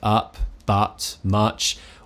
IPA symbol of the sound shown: ʌ